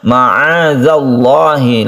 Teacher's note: lafadz Allah yang didahului oleh fathah maka dia ditebalkan atau tafkhim